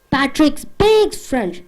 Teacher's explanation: Speaks should be 50%. Patrick should be 100%. French should be 100%.